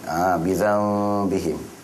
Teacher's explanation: dengung pada kadar dua harakat nun mati bertemu dengan huruf ba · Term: Iklab